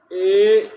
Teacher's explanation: कंठ में भी होता है कंपन और तालु में भी कंपन होता है। ए वहां से आकर बिल्कुल तालु में टच होता है। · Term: कंठ तालु